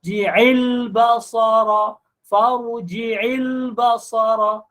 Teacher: Ji'il, ji tak muncul mulut kerana makhraj dia di tengah. Ain tu main daripada tengah halkum.